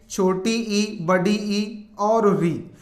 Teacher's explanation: स्वर जो जीभ के अगले हिस्से से उच्चारित होते हैं और जिनको बोलते समय मुख लगभग बंद रहता है, संवृत स्थिति में रहता है, वो स्वर है आपके छोटी ई, बड़ी ई और री। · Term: अग्र स्वर